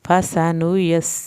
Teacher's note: یہاں پر سین کی سیٹی کی آواز نکالیں گے